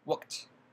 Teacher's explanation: In the verbs that end in voiceless sound, the ed sounds like the voiceless t